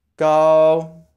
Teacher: stay with a flat tone like your robot · The next word, gao, is spelled G-A-O, so it sounds pretty much like hao, but swap out the H with a G sound. Gao, and say with a flat tone, like you're a robot.